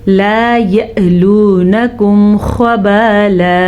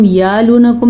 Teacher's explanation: جب کبھی حمزہ کے اوپر ساکن آ جائے تو حمزہ جھٹکے کے ساتھ پڑھا جاتا ہے